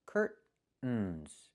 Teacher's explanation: Or I can use a stop T and say curt, stop the air, put the tongue up, curtains. curtains, and go directly to the N.